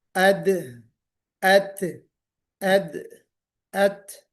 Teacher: सनाया उलिया की जड़ में जुबान की नोक टच होगी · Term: दाल और ता